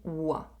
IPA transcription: wa